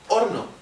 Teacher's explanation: hoy día mantenemos la variante sin aspiración